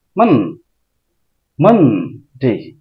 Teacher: মানডে উচ্চারণ আমরা করবো না, আমরা করবো মানডে। মান দ্রুত বলতে হবে, মা উচ্চ স্বরে বলতে হবে